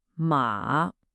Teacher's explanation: The third tone dips down and then comes right back up. Think of it like a little scoop.